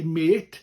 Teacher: in South Wales we tend to elongate things anyway, so we would say mate.